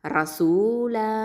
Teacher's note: மத்துல் ஐவது சட்டத்தின் அடிப்படையில் 2 ஹரக்கத்தை நீட்டி நிப்பாட்டணும்.